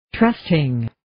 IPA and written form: 'trəstɪŋ (Trusting)